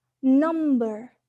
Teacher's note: The second case, n in number, the oral passage is blocked by pressing the tongue or tongue tip against the alveolar ridge, and it is alveolar